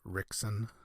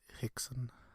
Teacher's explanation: Um, it's interesting, right, in Brazil how the R the R in the beginning of names or words has a sound. It's like a almost like a a very breathy H.